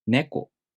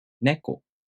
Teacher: the accent is on the first syllable, and then the pitch drops after the first syllable. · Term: pitch accent